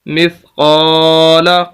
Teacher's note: میم دیر سا مف، قاف زبر الف قا، مثقا، لام زبر لا، مثقال، قاف کے آگے الف ہے اور یہ الف مدہ ہے، اس وجہ سے قاف کو ہم لمبا کر رہے ہیں، وگرنہ زبر زیر پیش اور لفظ کو لمبا نہیں کیا جاتا۔ قاف کو اس وجہ سے لمبا کر رہے ہیں کہ الف مدہ ہے